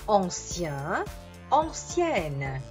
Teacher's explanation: Mantengo invece in questo caso la prima nasale di AN